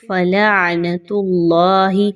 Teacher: اللہ کے حرف سے پہلے تا کے اوپر کوئی حرکت آ گئی پیش کی تو آپ نے اللہ کے حرف کو بھی موٹا کر کے پڑھنا ہے، باریک نہیں پڑھنا